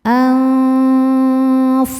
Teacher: fa ini makhrajnya tidak terlalu jauh dan tidak terlalu dekat dengan nun sehingga bunyi samar dan dengungannya sama besar